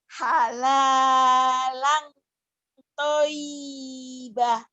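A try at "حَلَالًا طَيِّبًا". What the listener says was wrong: Toyibah. Halalan toyibah. Toyibah. Kan kalau bapak nggak ada bapak. K-nya nggak dibaca. Tulisannya kan bapak. Toyibah. Ini nggak ada A. Nggak ada H. Toyibah. Panjang. Y-nya kurang nyamber, kurang seksi.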